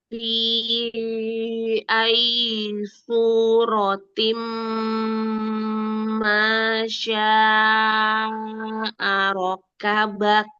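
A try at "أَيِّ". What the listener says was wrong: Ya, ayyi kasrohnya selesaikan ayyi ayyi. Selesaikan kasrohnya ya.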